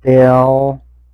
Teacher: when he ends the L, it should be more of an oo